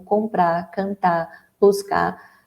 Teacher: Os infinitivos dos verbos normalmente, né? É uma tendência da língua que tem esse apagamento do R final.